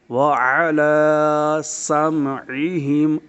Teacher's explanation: کھڑی زبر کو ایک الف کی مقدار دراز کریں۔ · سین پر سیٹی کی آواز ہو۔ · عین، اس کی ادائیگی اچھی طرح کریں۔ حمزہ کی آواز ہرگز پیدا نہ کریں۔ اگر حمزہ کی آواز آئی تو لحن جلی کا ارتکاب ہوگا جو کہ حرام ہے۔